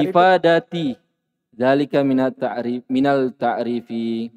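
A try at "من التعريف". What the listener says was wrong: Yang tidak panjang dikasih panjang. Minat ta'rifi.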